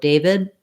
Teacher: What we tend to do there is make a stop. So David, I don't really release my air from that D sound, which might make you sometimes hear it as though it were a T.